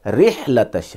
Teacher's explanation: را کو ملائیں گے ہا کے ساتھ، رح اور ہا نکالیں گے گلے سے